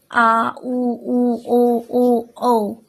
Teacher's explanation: जिन स्वरों के उच्चारण में जीभ का पश्च भाग काम करता है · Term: पश्च स्वर